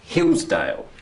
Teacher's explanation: Which is the strong syllable? Is it hills or is it dale? Hills.